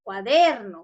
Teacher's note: la mayor fuerza de voz debe ir en la DER